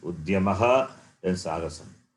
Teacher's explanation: The place of pronunciation need to be remembered. So Udyamaha is Kanta and Sagasam is dental. So from Kanta to dental, you have to jump. The place of pronunciation has to be changed.